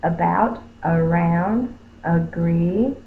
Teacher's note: it says the up sound because it is an unaccented syllable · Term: schwa